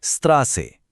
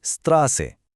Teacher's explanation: সোজা কথায় বললে এটা একটা জোরালো স সাউন্ড। যেন দুটো স একসাথে উচ্চারণ করা হচ্ছে। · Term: এসে সেট